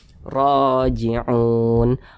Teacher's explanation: Mad tabi'i panjangnya 2 harokat atau kira-kira 2 ketukan.